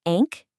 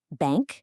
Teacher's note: It stops sounding like a sharp N sound and starts sounding more like a soft N sound. It's this nasal sound that connects the vowel to that final K.